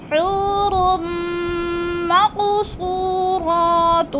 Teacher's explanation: میم مشدد کو را متحرک کے ساتھ ملا کر ادغام کر رہے ہیں، جیسے حور مقصورات، سختی سے جماؤ کے ساتھ حور مقصورات۔ مق میں جو ہے قلقلہ ہو رہا ہے، قاف حروف قلقلہ میں سے ہے اور ساکن ہے